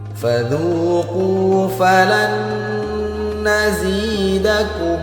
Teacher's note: nun sukun berjumpa dengan huruf nun, maka harus kita dengungkan 2 harokat. Hukumnya idgham bi gunnah.